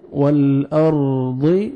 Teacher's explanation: را ساکن سے پہلے فتح ہے، را کو آپ نے پر کرنا ہے ، والارض، ضاد کو موٹا کر کے پڑھیں گے، والارض ذا،